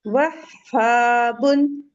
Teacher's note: जब आप हा बोलेंगे तो ये ओपन रहेंगे आपके वोकल कॉर्ड। और आपकी एयर आप देखेंगे कि ये यहाँ से जाके ये माउथ से निकलेगी, ठीक है।